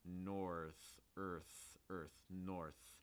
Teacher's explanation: These are both voiceless THs, so your throat does not need to vibrate. It's just a th sound.